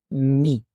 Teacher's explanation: और वो मखरिज क्या है कि join the outer parts of lips यानी कि होठों के बाहर वाले हिस्सों को आपस में मिलाएं और दोबारा उनको खोलते हुए आवाज को अदा करें। तो इसकी आवाज जो है वह मीम की आवाज अदा होती है।